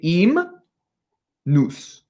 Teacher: And in Latin, in this version of Latin, we don't pronounce H's.